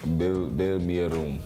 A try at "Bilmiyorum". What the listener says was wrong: Yes, not like room. Yeah, bilmiyorum.